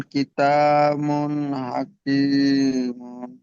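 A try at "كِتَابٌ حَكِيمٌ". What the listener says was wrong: কিতামুন নয়, বা দুপেশ বুন হয়, কিতাবুন হাকিমুন। জি, ঠিক কেমন ছাড় ছাড় করে যেমন বানান করে পড়িয়ে দিলাম, ঠিক এই রকম ভাবে পড়বেন।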